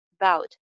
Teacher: About भी two syllable words है. Second syllable को stress किया जाएगा. About, यानी about का first syllable dull voice में, unclear voice में बोला जाएगा.